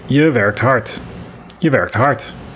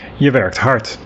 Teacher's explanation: Notice that I don't pronounce je very much, I just say it quickly. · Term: unstressed